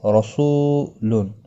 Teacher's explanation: رو زبر کی وجہ سے پر پڑھا جائے گا